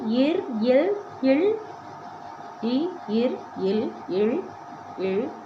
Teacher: இடையின மெய் எழுத்துக்கள் ஆறும் சாரி கழுத்து இடமா கொண்டு பிறக்குது